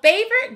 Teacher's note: we hear two syllables but the spelling looks like three syllables with an o in the middle that we don't really hear